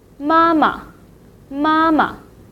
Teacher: Usually in Mandarin, when we talk about the family member, the second syllable will be repeated and marked in a neutral tone. So the second word of mama, the second syllable will be in a neutral tone.